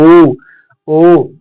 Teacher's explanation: जो आप इनका उच्चारण जब करेंगे तो मुख आपका गोलाकार बनेगा। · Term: वृत्त मुखी